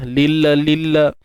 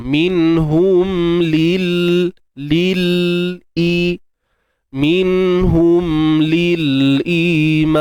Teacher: Matikan lam macam biasa. Jangan kita beranakkan lagi lah bunyi dia.